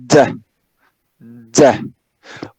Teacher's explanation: We make a complete closure, right, with the tip of the tongue and the alveolar ridge, right? We make a complete closure, and then we release this closure, right? And again, we have to feel this explosion, right? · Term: plosives